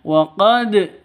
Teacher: qolqala sugro dipantulkan ke dalnya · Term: qalqalah sughra